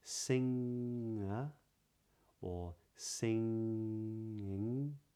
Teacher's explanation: the G is still not pronounced even though it's in the middle of a word